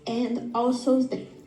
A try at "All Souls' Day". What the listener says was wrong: See, it's too quick.